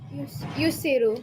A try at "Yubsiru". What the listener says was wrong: Well, you said yus, which means you started with this guy.